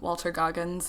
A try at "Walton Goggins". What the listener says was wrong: Walton Goggins. Walton, yep. Not Walter. It's Walton Goggins.